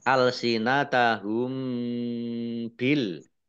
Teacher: mim sukun bertemu ba ya satu huruf ini namanya Ikhfa Syafawi tidak ada yang lain ya dibaca samar-samar